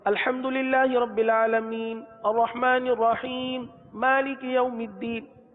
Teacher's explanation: ہم آواز تو روک رہے ہیں، حرف کو ساکن بھی کر رہے ہیں، لیکن سانس نہیں لے رہے